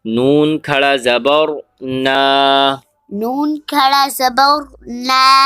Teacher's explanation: نون کے اوپر کھڑا زبر ہے. ایک الف کی مقدار کھینچ کے پڑھیں گے